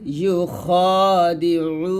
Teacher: আমরা অনেকে খটাকে খা বলি, তো এই ভুলটা করবেন না, খ বলতে হবে